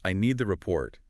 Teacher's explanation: Think about the difference between saying, "I need the report," with the final T sounds very soft or dropped, versus saying, "I need the report," with a clear, crisp final T.